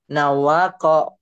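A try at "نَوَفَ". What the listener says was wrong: Nawafa. Titiknya satu. Kok dua. Nawafa.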